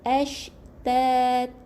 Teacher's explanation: Masukkan B dengan la tanpa, dengan tidak dengung. Jadi masukkan bunyi nun ni ke dalam bunyi lam yang sabdu tanpa dengung